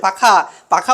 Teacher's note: পাখা বললে কোথায় দুটো ঠোঁট কিন্তু একে অপরে লেগে যাচ্ছে তাইতো তাহলে এই ঠোঁটও কিন্তু আমাদের উচ্চারণে সাহায্য করছে তাই এইগুলোকেও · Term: অষ্ঠ